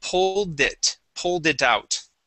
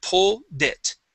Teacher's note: you're trying to complete it think of them as being separate so pull and then slide that d over with it